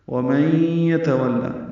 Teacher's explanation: نون ساکن کے بعد یا آنے کی وجہ سے ادغام ناقص ہے، غنہ ہوگا